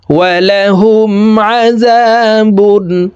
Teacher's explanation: তানউইনের পর ইজহারের হরফ হামজা আসছে এই কারণে তানউইন ওয়ালা বাটি গুন্না ছাড়া স্পষ্ট করিয়া পড়ব